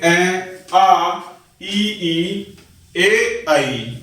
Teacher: जिन स्वरों को बोलते समय ओष्ठ वृत्त अर्थात गोल आकार नहीं बनाते वे अवृत्ताकार स्वर कहे जाते हैं।